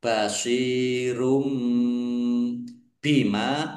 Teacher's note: Domah tanwin bertemu dengan huruf ba. Bacaan iqlab ya dibaca membalik. Tanwinnya dibaca ba basyiru dibaca mim.